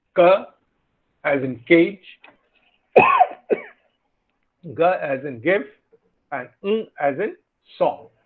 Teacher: Velar, as I said, velum, it comes from, so the back of the tongue is the active articulator and the soft palate is the passive articulator. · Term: velar sounds